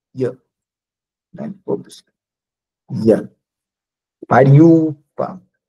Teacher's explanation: o i aqui, quando encontra uma vogal que não seja ele, vira semivogal palatal